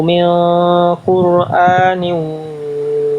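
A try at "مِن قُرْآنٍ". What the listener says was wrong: di sini tebalkan lagi sedikit lagi sama nih ikhfanya.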